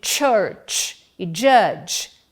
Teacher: Iniciam com uma obstrução total a passagem da corrente de ar pela cavidade oral, mas em vez de terminarem como oclusivas, terminam como fricativas. As consoantes T e J de church e judge são africadas.